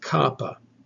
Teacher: To make the sound of kappa, you raise the back of your tongue up towards the back of your hard palate, and you stop the breath there. You let the air pressure build up behind that stoppage, and then when you let the air go through without engaging the vocal cords, you make the sound of kappa, like the English K.